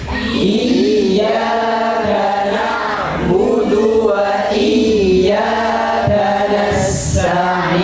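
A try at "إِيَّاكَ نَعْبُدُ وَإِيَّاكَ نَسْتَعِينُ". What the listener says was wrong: Perhatikan di dalam lafaz iyyaka ada tasdidnya. Maka tasdidnya harus ditekan dengan kuat. Namanya tekanan atau intonasi pada huruf saat bertasdid. Dengan cara tengah lidahnya diangkat, ditekan ke atas. Karena kalau tidak ditekan, lempeng aja. Iya, tidak ada tasdidnya. Iya, dan juga wa iya karena nasta'in sama.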